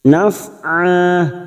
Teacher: huruf Ain fathah tanwin yang dibaca waqaf di sini Mad iwad dua harakat kita panjangkan